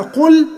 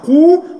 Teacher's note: القاف ضمه قو واللام ساكنه لازم تبينها